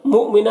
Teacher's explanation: مؤمنہ، یہاں پر حمزہ ساکنہ ہے، واو حمزہ واو کی شکل میں ہے اور حمزہ ساکنہ ہے تو جھٹکا لگے گا یہاں پر